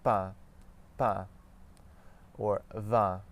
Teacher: think of the word a, like what you do in there, in Canadian English, and then add a faint N sound to that